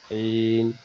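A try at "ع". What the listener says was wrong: আইনটা আরেকটু গলা চাপ হবে, আমার সাথে বলেন আইন।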